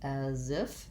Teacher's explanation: we typically link these two together, and the letter S says the sound Z. So we have black cat vowel, as if.